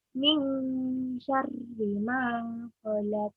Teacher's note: Itu ada nun bertemu dengan huruf shin atau sya. Kita bacanya samar-samar dan ditahan sejenak. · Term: ikhfa